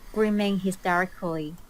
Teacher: Notice how she pronounces everything syllable by syllable.